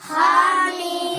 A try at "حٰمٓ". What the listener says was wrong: ہا میم چھوٹا ہا نکالو چھوٹا ہا نکالو پہچاننے میں نہیں آ کہ چھوٹی ہا کیسی بڑی ہا کیسی ہے. دیکھ کے پڑھو نا نیچے یہ چھوٹی ہا ہے ہا میم